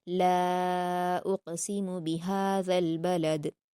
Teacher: یہاں پر دیکھیے اقسم میں قاف پر قلقلہ کیا جائے گا، بہاذل ذال کے مخرج کو نرمی سے ادا کرنا ہے، بلد لاسٹ میں دال پر جب ہم وقف کریں گے تو جزم لگ جائے گا، اس لیے یہاں پر قلقلہ کے ساتھ پڑھا جائے گا۔ اور لام پر الف مدہ کے بعد حمزہ ہے تو مد منفصل ہے، اس کو ہم 4 حرکات کے برابر کھینچیں گے